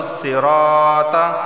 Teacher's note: را علی زبرہ اسے ایک الف کے برابر کھینچ کر پڑھا جائے گا